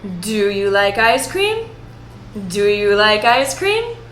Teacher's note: The yes-no questions end on a higher note. It's like music. But before we go up, we go down.